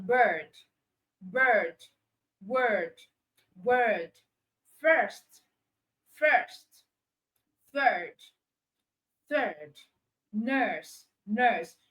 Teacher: But when you move to the long one, you have that's the sound, the long sound so you have words like bird, bird, word, word, first, first, third, third, nurse, nurse. You can see that the mouth is tenser. Okay, apart from the fact that you have to hold it long, and the mouth is tenser. So the mouth and the tongue positioning are different.